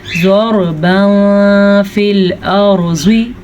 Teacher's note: रॉ भी पूर पढ़ना है क्योंकि रॉ साकिन से पीछे ज़बर है तो रॉ पूर पढ़ी जाएगी।